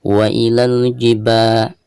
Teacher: ketika membaca ba-nya maka di sini dipanjangkan 2 harokat karena dihukumi mad tabi'i. Ada harakat fathah lalu berhadapan dengan alif seperti ini.